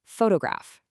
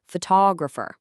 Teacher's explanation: When we talk about the picture, the stress is right at the beginning